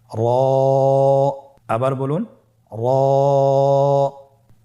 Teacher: র হরফটি এখানে আমরা পোর করে উচ্চারণ করব, মোটা করে উচ্চারণ করব, এবং র হরফটি এক আলিফ টেনে পড়ব। · আপনারা আমার সাথে বলুন র আবার বলুন র এর মাখরাজ কোন জায়গা থেকে স্ক্রিনে দেখুন জিহ্বার আগার উল্টা পিঠ তার বরাবর উপরে তালের সঙ্গে লাগিয়ে উচ্চারিত হয়